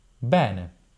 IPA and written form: ˈbɛne (bene)